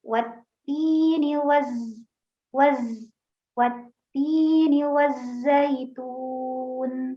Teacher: sifat sofir pada huruf zai